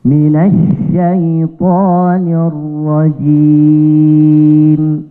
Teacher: huruf mim di akhir harus jelas dan posisi mulut kita harus tertutup.